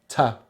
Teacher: The first sound is the T consonant sound, which is a very easy sound to make, and it's very similar to the N nasal sound, but this time there's no air through the nose, all the air comes through the mouth